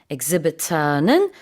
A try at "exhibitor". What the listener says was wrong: Oh, you exaggerated that at the end.